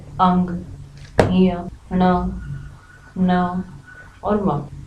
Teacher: ये सभी और इसके अलावा अनुनासिक या अनुस्वार भी आप कह सकते हैं, ये सभी वर्ण नासिका के माध्यम से, नाक के माध्यम से बोले जाते हैं